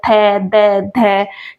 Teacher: और ये दंत्य मतलब दांत। जो हमारे ऊपर के दांत होते हैं वो हमारी जीभ पर टच होते हैं। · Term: दंत्य वर्ण